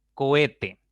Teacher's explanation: la que suena con mayor fuerza con mayor intensidad es la segunda la del medio y por lo tanto esa es la sílaba tónica las otras